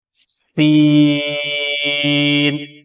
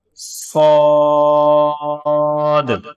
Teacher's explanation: سین میں سیٹی کی آواز آئے گی لیکن وہ باریک ہے، اور صاد جو ہے اس میں بھی سیٹی کی آواز آئے گی لیکن یہ تھوڑا سا موٹا کر کے پڑھنا ہے